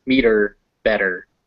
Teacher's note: those second e's are unstressed so they're schwas